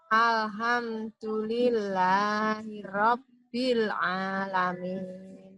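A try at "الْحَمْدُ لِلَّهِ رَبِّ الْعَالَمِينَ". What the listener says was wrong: Untuk matnya nih Bu, panjang pendeknya hati-hati Bu. Panjang pendeknya hati-hati Bu ya. Jangan sampai ada panjang yang melebihi ininya, seharusnya ya. Mat tabi'i ya. Sudah hampir semuanya ya, hampir semua ibu-ibu di sini tadi Ana kritisi di mat tabi'inya Bu.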